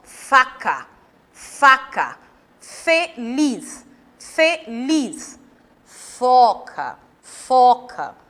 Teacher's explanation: As duas letras, elas representam o mesmo modo de articulação. Eu coloco o meu dente superior sobre o meu lábio inferior e sopro.